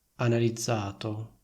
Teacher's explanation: La N di analizzato non è doppia e quindi è molto meno forte.